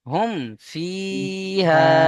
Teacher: মিম সাকিনকে কি করতে হবে বিনা গুন্নায় জাহির করতে হবে অর্থাৎ গুন্না করা যাবে না